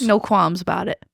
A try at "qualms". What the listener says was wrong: Qualms. I feel like you're saying qualms. Yeah, get that L in there.